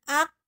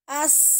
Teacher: Kalau qaf tadi tertahan, ak putus, ak tertahan, mampet, suaranya tidak keluar. Kalau sin itu namanya rohwah, as mengalir.